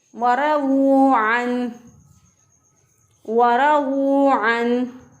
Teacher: वाद को भी मोटा पढ़ेंगे, रॉ को भी मोटा पढ़ेंगे।